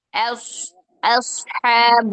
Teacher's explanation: حمزہ باریک کر کے صاد موٹا کیجیے